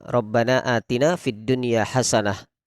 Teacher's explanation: Jadi kalimat dunya di situ tidak kita idghamkan, tapi kita baca idhar wajib.